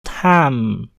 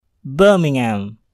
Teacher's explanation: Bunyi H dihilangkan sehingga bunyi eng bersambung ke menjadi Birmingham.